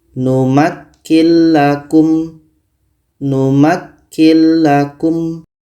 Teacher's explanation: Maka nun mati ini kita masukkan ke la dan tidak boleh dengung. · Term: idgham bila gunnah